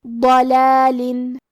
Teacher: کلمت ضلالن میں حرف الضاد کی ادائیگی زبان کی کروٹ اور اوپر کی داڑھوں کی جڑ سے ہے، ضاد حروف تفخیم میں سے ہے تو ہم یہ حرف کو بھاری آواز میں اور منہ پھلا کے پڑھیں گے